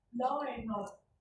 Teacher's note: the law and order, R appears because the next word begins with a vowel. So it's like law and order.